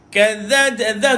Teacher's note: hujung lidah dikeluarkan tuan-puan, hujung lidah keluar tu. Kadza dia duduk kat bawah gigi atas.